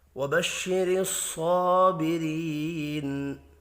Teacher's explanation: کھڑی زبر کی وجہ سے 1 الف کے برابر کھینچ کر بھی پڑھیں گے۔ را زیر کی وجہ سے باریک پڑھیں گے۔ یا مدہ کو 1 الف کے برابر کھینچ کر پڑھنا ہے۔ · صاد حروف مستعلیہ ہے، پر پڑھا جائے گا۔ کھڑی زبر کی وجہ سے 1 الف کے برابر کھینچ کر بھی پڑھیں گے۔